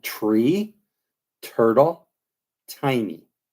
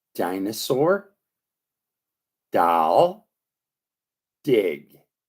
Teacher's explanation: I want you to make a D sound and make the same sound movement, but this time, instead of just releasing air, you should release the air, release the sound from when you make the T sound. Then switch between making the unvoiced T and the voiced D sound